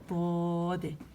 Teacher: ٹھیک ہے، یہ میں نے یہاں لکھا بھی ہے، دیکھیں کہ زبان کے دونوں موٹے کنارے جب اوپر کی داڑوں کے اندرونی سطح کو مضبوطی سے لگے تو حرف ضاد ادا ہوتا ہے